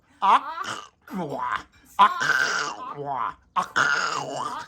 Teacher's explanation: the Q is not only breathless, it's completely voiceless. And without a breath, without air, you can't make a sound.